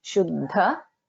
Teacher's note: Here there is Alpa Pranada and then Mahapranada. Shuddha. Both has to be heard.